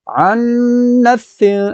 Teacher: عن پر غنہ کریں گے، کیوں؟ کیونکہ یہاں نون مشدد ہے۔